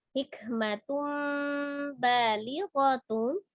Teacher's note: tanwin yang bertemu dengan huruf ba iqlab merubah bunyi nun sukun menjadi mim sukun disertai dengan gunnah